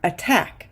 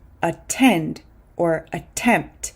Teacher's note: syllable for example we don't say aack we say attack because the t is inside the stress syllable